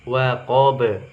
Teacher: Ba terakhir. Wa qob, karena dia di akhir ayat maka qalqalah kubro dipantulkan juga